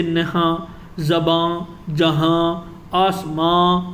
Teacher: جس نون کو پورا نہ پڑھا جائے بلکہ ناک سے آواز نکالی تو اسے نون غنہ کہتے ہیں. جیسے میں ہیں وغیرہ وغیرہ آپ پڑھ چکے ہیں، جیسے نہاں، زباں، جہاں، آسماں وغیرہ.